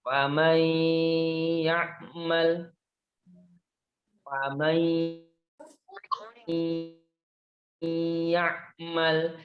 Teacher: Dalam tulisan tertulis faman ya'mal, tetapi dalam pembacaan kita memasukkan huruf nun ke huruf ya. Jadinya faman ya'mal, faman ya'mal, pendang huruf ya-nya. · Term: idgham bigunnah